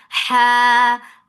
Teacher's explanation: make it two counts long from your throat.